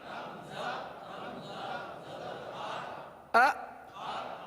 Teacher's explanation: یہ جھٹکا ہے, یعنی آپ ایک دم سے آواز کو روک لیں. ا. حمزہ حمزہ زیر ای.